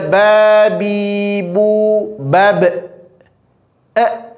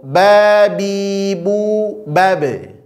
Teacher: menambahkan makhraj huruf yang lain yaitu makhraj huruf hamzah